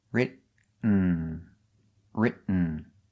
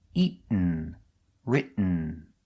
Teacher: You go to a stop T, writ, but you don't make the T, you stop, writ, and then you fall to an N.